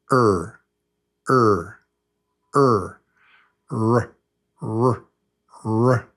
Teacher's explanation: there's no tap, just er.